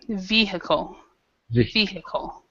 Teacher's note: the stress in this word is in the first syllable